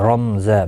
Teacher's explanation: رما نہیں پڑھا جائے گا، یعنی میم کے اوپر زبر نہیں لگنی چاہیے. رمزا میم کو ظاہر کر کے پڑھا جائے گا.